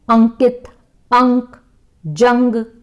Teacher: इनका उच्चारण जो अनुस्वार होता है, इनका उच्चारण नाक की सहायता से होता है